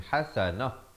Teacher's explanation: ta marbutah ini, ta simpul ini ditukarkan kepada bunyi ha dan diberikan tanda mati mendatang.